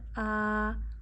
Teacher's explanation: اب یہاں ہے کھڑی زبر، کھڑی زبر کو ایک انگلی جتنا کھینچا جاتا ہے۔ الف پہ کھڑی زبر ہونے کی وجہ سے الف حمزہ بن چکا ہے، اسے حمزہ پڑھیے۔